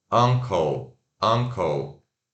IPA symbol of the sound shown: ʌ